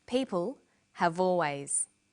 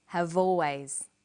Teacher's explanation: in conversation we link the final consonant sound V